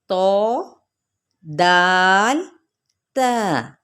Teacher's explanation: زبان کی جو نوک ہے نا آگے والی، یہ دیکھیں جہاں سے ٹیسٹ ہم لیتے ہیں، زبان کی نوک اوپر سامنے والے جو اوپر کے 2 دانت ہیں نا ان کی جڑ سے ادا ہوتے ہیں۔ یہ دیکھیں، آپ خود فنگر لگائیں گے تو آپ کو پتہ چلے گا اندر کی جانب جڑ جہاں سے شروع ہوتی ہے وہاں سے۔